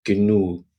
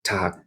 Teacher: But you might notice that G on the end of the word I'm saying, genug, sounds like a K. So when G comes at the end of a word, it takes on a slightly sharper form, more of a k sound.